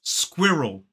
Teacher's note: So it is sk, and then we have the I sound, squid, and then we voice the R, But the R kind of moves over into the second syllable in front of that schwa, so it becomes squirrel. Notice that that L is the dark L